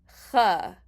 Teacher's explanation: Ch is almost like a K, in that's where the sound is coming from, but you're not letting the tongue touch the roof of your mouth. Instead, you are just letting that sound come out.